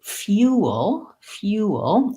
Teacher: I have the vowel ooh as in blue shoe in this word